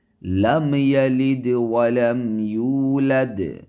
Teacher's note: میم ساکن کا اظہار ہوگا، یعنی ظاہر کر کے اس میم کو پڑھیں گے · میم شفتین سے نکلنے والا حرف ہے، یعنی دونوں ہونٹوں کے درمیان سے نکلتا ہے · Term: اظہار شفوی